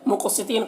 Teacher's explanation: قاف کو پر پڑھیں گے اور قاف میں قلقلہ کریں گے